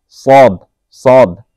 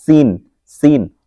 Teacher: সদটা হচ্ছে একটু মোটা করে আর সিনটা হচ্ছে একটু চিকন করে